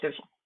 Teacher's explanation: The neutral tone is toneless. It is pronounced softly and is short like a staccato or like a hiccup.